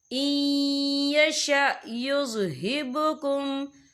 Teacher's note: یہاں نون ساکن ہے، نون ساکن کے بعد جو ہے یا آ رہا ہے، اور یا جو ہے حروف یرملون میں سے ہے تو یہاں پر ادغام ہوگا، تو ہم اسے تھوڑا سا غنّے کے ساتھ پڑھیں گے۔